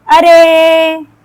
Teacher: अरे जो हम बुलाते हैं ऐसे किसी को तो वहां पे थोड़ा सा आलाप करती हुई ध्वनि निकलती है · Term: अप्लुत स्वर